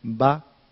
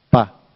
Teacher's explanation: la diferencia es mínima es una sonora la otra sorda